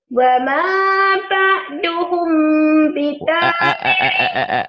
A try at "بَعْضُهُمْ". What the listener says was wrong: Wama ba'duhum, bukan ta'duhum. Wama ba'duhum.